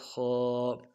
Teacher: اس کو ادا کرتے ہوئے ہونٹوں کو بالکل گول نہیں کریں گے، اور کھڑا زبر کو ایک الف دار میں کھینچیں گے۔